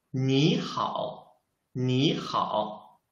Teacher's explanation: if there are two third tones, we should change the first third tone into the second tone.